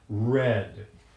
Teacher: an approximant that happens right around the gum Ridge behind the upper teeth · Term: turned R